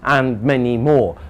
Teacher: Everybody understands and many more, because we finish with the rising intonation. We finish with that voice going up, and that says, I've not finished.